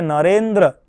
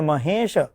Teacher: અકાર અને ઈકાર એ બંનેના સંયોગથી એ બંનેના સંમેલનથી એકારનું ઉચ્ચારણ થતું હોય છે